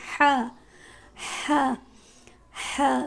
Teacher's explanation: ہا بھی گلے کے درمیان سے ادا ہوتا ہے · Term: حروف حلقی